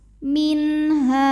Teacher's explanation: sebab nun sukun menghadapi huruf halti atau huruf tenggorokan yaitu H maka nun sukun dibunyikan dengan jelas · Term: izhar halqi